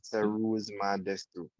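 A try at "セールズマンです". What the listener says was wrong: You don't need the U. It's not we don't usually pronounce it in Japanese.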